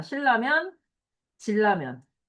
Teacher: 무조건 니은이 리을로 바뀌는 거다